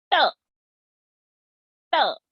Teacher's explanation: you have to roll back the tongue and touch it each time to the roof of the palate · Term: cerebral sound